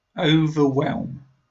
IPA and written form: ˌəʊ.vəˈwelm (Overwhelm)